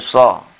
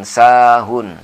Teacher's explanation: Mulut agak menjorok ke depan menyebutnya. Beda dengan sahun. Sahun ini S biasa.